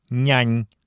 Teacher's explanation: в удмуртском языке упомянутые согласные произносятся не как мягкие или палатализованные, как в русском, а как палатальные. Они образуются между средней частью спинки языка и твердым небом.